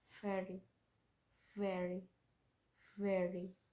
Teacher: V sound is voiced labial fricative consonant